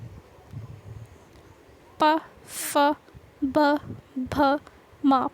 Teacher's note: जब भी हम बोलते हैं तो हमारे होठों पे आती है वायु, ये होता है ओष्ठ्य